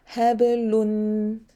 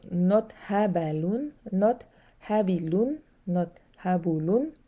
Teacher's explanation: I have to make sure I don't round my lips on or go on fatha or go on kasra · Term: qalqala